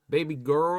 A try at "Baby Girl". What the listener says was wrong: Why do you say it weird? Don't say it weird. You just hit the R real hard.